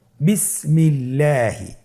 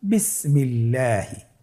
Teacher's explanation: আল্লাহ শব্দের দ্বিতীয় লামের আগে এখানে জের এসেছে, আপনারা জের দেখতে পাচ্ছেন। এই জন্যে আল্লাহ শব্দের দ্বিতীয় লামটিকে বারিক করে পাতলা করে পড়তে হবে।